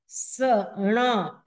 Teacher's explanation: ण बोलेंगे तो मुर्दा से इसका उच्चारण होगा · ण का जो उच्चारण करने का जो स्थान है वो मुर्धन्य है मने मुर्दा से वो निकलता है सण ऐसे ण बोलेंगे तो